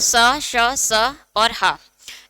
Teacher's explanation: ऊष्म व्यंजन महाप्राण और अघोष होते हैं, किंतु हा सघोष होता है।